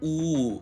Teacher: вы говорите у вас губы вытягиваются и округляются и сжимаются